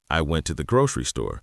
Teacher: Grocery often retains the stress over store because it's the more specific defining detail.